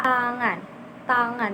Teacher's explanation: Untuk T sendiri ini menempelkan lidah di gusi atas lalu melepaskannya. T di gusi atas lalu melepaskannya. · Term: huruf T